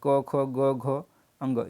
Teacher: कंठ से होता है क वर्ड, यानी कि क वर्ड के अंतर्गत जितने भी आएंगे क वर्ग के अंतर्गत उनका उच्चारण स्थान कंठ होगा।